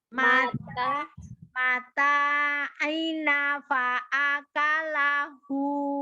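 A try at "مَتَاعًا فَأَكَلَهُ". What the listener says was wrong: Nanya 2 harokat ya. Nanya 2 harokat.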